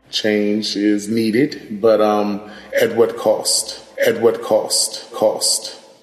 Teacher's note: Another feature that we see in DC, similar to New York, is the raised thought cloth vowel, that ah. This is a new feature in DC, and we think it's part of a pattern of DC varieties becoming more like northern cities as opposed to the South.